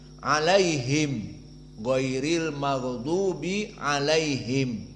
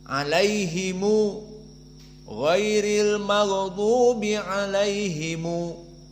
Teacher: qiraah hafaz an Asim alaihim giriril magdubi alaihim maka di sini qiraah Abu Jafar dan Ibnu Katsir mim jamak dijadikan Silah jadi didamahkan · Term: silatul mim